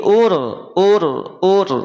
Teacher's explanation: bagaimana irgham itu perhatikan ini kan semula UN betul UN maka ketika ada huruf ro setelahnya tidak lagi dibaca UN Tetapi dia akan berubah menjadi ur nah gitu ur r-nya dari mana R dari huruf ro gitu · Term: idgham